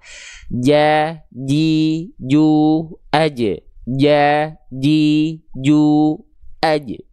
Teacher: Jadi biar huruf jim ini nggak bocor becek nafasnya, pastikan dilafalkan sesuai dengan makhrajnya, nempel tengah lidahnya betul-betul ke langit-langit, tidak ada celah.